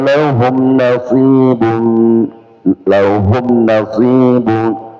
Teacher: mim sukun ketemu selain mim dan ya izhar ya izhar syafawi maka tidak berdengung